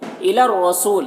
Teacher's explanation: را مشدد حرف ہے تو پیچھے والی متحرک حرف لام سے مل کر پڑھا جائے گا۔ را کو پر پڑھیں گے